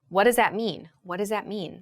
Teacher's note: the th in that becomes like a s or a z sound what does that mean so it connects to that z sound